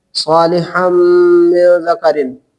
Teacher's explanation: نون تنوین کو میم سے بدل کر ادغام کریں گے